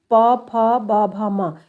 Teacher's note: ये होठों का स्पर्श करते हैं इसलिए ओष व्यंजन कहलाएंगे